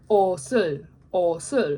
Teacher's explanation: the shiot is being put on top basically of that second syllable. It is being moved over